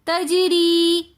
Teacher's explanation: جنات تجری کے اندر بھی یا مدہ آ رہی ہے تو اس لیے ہم اس کو تجری تھوڑا سا کھینچ کر پڑھیں گے